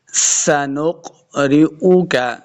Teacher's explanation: سین پہ سیٹی کی آواز آئے گی. سنق آگے نون کو قاف کے ساتھ ملانا ہے.